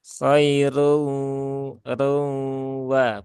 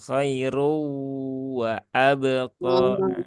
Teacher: hidung ya maka suara nunnya atau tanwinnya jangan dihilangkan ya jadi separuh masuk ke Nun separuh masuk ke wau sambil didengungkan itu sambil ditahan tiga harakat